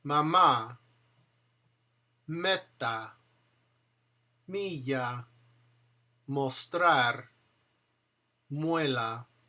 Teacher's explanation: M bilabial, N alvialer and N palatal. The release of the air comes through the nose, not the mouth. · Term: voiced nasals